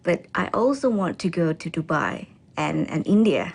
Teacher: She then lists the countries with her voice pitch rising until she ends with a level voice for Dubai. She uses a rising intonation to express the afterthought, India.